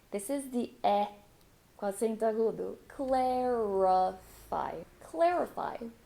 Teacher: for clarify, even though I have the letter A, I'm not going to say cla, I'm going to say cle.